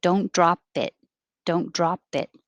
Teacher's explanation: you won't hear the p unless there's a vowel following it like don't drop it don't drop it and the vowel ah